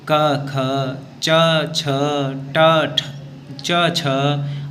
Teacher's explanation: विवार, श्वास और अघोष बाह्य प्रयत्न होता है खर वर्णों का, जिसमें कि प्रत्येक वर्ग के प्रथम द्वितीय वर्ण आते हैं और तीनों सकार आ जाते हैं।